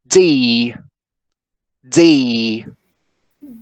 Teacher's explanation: remember that is an alveolar sound right and we say so the tip of the tongue touches the alveolar ridge okay so we say we make a complete closure right with the tip of the tongue and the alveolar ridge right we make a complete closure and then we release this